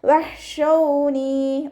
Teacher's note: വാ ഉച്ചരിക്കുമ്പോൾ ചുണ്ടുകളൊന്ന് വട്ടത്തിൽ പിടിച്ചെടുക്കുക. ഹ ഇസ്തിഅലാൻ്റെ ലെറ്ററാണ്, അപ്പോൾ നമ്മൾ ഉയർത്തിയിട്ട് ഉച്ചരിക്കുക, തഫ്ഹീം ചെയ്തിട്ട് ഉച്ചരിക്കുക.